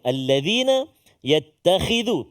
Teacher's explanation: Hujung lidah kita keluar sedikit huruf dzal.